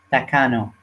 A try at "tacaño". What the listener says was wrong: Tacaño. Yeah, it has that ñ, like ña.